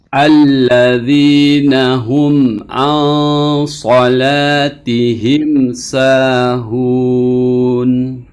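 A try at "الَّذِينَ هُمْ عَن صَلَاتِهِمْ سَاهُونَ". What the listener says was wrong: Sedikit tingkatkan lagi pada tawassudnya. Alladzina hum an dan lebih digeser dari bawah.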